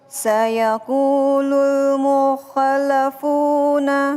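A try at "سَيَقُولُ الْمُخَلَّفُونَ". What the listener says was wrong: Nah, tadi yang pertama kurang di huruf fu-nya yaitu kurang panjang. Alif, wawu, ya. Huruf panjang ya. Nah, ketika membaca mad asli itu panjangnya cuman 1 alif.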